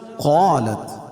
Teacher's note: قاف کو پر پڑھیں گے، قاف حروف مستعلیہ میں سے ہے